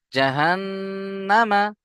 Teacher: নুনের উপরে তাসদিদকে শুধু এক আলিফ গুণনা করবেন কিন্তু এক আলিফ টান হবে না। উপরে হারাকাত আছে জলদি পড়তে হবে।